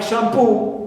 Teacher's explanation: so poo is stressed here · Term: primary stress